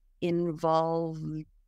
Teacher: to pronounce the Ed ending in American English in this case the E is silent and it just sounds like a d so the V goes straight into the D sound